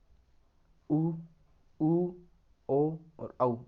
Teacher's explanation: तो इस आधार पर इसको 2 भागों में बांटा गया है, एक तो वृत्ताकार, एक अवृत्ताकार। वृत्ताकार वे स्वर जिनके उच्चारण के समय हमारे होठ वृत्त के समान गोल हो जाते हैं, वो वृत्ताकार स्वर में आते हैं, जिनमें उ, ऊ, ओ और औ, ये 4 स्वर आते हैं।